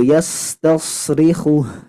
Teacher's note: Lalu di sini hu-nya tidak boleh terlalu panjang Bu.